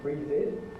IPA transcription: ˈbriːðɪd